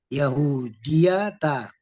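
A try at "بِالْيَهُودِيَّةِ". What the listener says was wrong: Ada huruf jar Pak Huruf jar.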